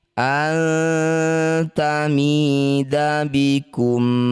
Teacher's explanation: Cara bacanya bunyi nun dengungkan dua harokat. Ketika dengung lisan kita sudah siap bunyikan tak. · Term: ikhfa akrob